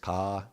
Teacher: it happens in the velar in the deepest part of the mouth where we have this little bell falling down that's down there and uh the following letters we will do in the following videos will be coming forward in our mouth. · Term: veler